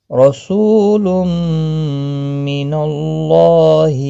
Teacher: تنوین کے بعد یرملون کا میم آیا ادغام باگنہ ہوگا · اللہ کا لام زبر کی وجہ سے پر پڑھا جائے گا ایک الف کی مقدار کے برابر کھینچ کر بھی پڑھا جائے